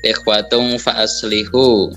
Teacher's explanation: domah tanwin bertemu dengan huruf fa. Maka cara membacanya yaitu dengan cara samar-samar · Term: ikhfa hakiki